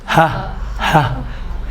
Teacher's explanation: بیچ میں آواز کہیں بھی نہیں ٹکراتی ہے. بہت توجہ چاہوں گا, کہیں پر بھی نہیں ٹکراتی ہے.